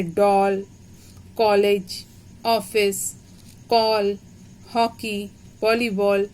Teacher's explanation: इसे आ और ओ के बीच की ध्वनि जो निकलती है वो बोलते हैं